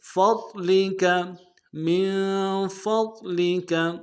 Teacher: فا کو ضاد کے ساتھ ملانا ہے، ضاد کو موٹا ادا کریں گے، لام کو نرم سے ادا کریں گے، کاف کو نرم سے ادا کریں گے۔